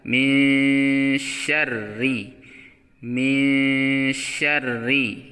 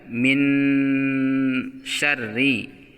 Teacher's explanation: Nun tidak boleh dibaca jelas tetapi dibaca samar dengan mengarahkan kepada huruf setelahnya yakni huruf syin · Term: ikhfa